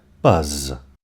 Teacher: your fingers on your throat when you say the word buzz you should feel a vibration in your throat at the end of the word this is caused by the vocal cords vibrating and adding to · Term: voiced sound